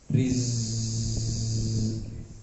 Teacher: Kalau sin mendesis, kalau zai bergetar.